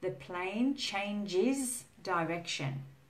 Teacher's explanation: can you hear the is sound? Are you holding your hand onto your throat so you can feel that voiced consonant, the is or the z sound?